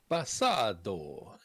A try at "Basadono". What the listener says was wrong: You missed a syllable there.